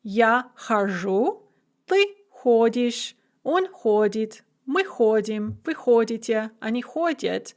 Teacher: is a second conjugation verb with a shifting stress, and it also has a consonant mutation in the я form